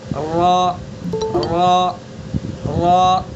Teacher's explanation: زبان کے کنارے کو اور زبان کے کچھ پیچھے والے حصے کو ثنا علیہ یعنی اوپر والے ثنا علیہ اور رباعیات کے مسوڑوں سے ٹچ کریں گے تو را ادا ہو جائے گا، را، را، را۔ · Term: را کا مخرج